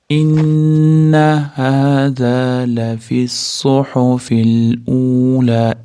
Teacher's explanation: Innani tashdidan kelgani uchun g'unnasi bor. To beshtacha ushlab turamiz.